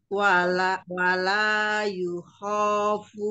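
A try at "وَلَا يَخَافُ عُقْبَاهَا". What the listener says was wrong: Ya, fathah semua. Punya tidak panjang. Wala yakhafu uqabaha.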